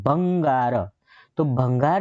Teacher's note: ભંગાર જે છે ને એની અંદર ભ જે છે એની ઉપર તમારે વજન આપવો પડે છે એટલે ભલે ભંગારમાંથી જે ભ છે એ એકલો છે એટલે લઘુ